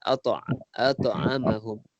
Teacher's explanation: perkataan ata, ta tu qalqalah sughra. Dia ada lantunan sikit